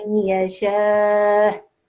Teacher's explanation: So yes, as she said, if she was continuing, it's fine with the dhamma, but because she's pausing, the sukoon will be applied on the hamza, so there'll be a slight jerk at the end of that word